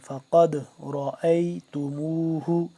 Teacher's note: جب دال ساکن ہے تو یہاں پہ قلقلہ کریں گے